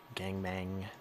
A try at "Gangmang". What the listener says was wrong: You say it like it's gangbang. Gangmang.